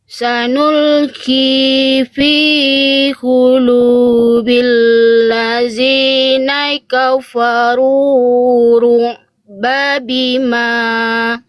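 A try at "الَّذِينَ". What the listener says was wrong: Bunda, ini huruf apa sama ya? Ini kayak a'udzu tadi, jangan dibaca zai. Ini zal, Bunda. Ujung lidah disentuhkan ke ujung gigi sari atas. Zi. Zi bukan zi. Fi qulubil ladzina.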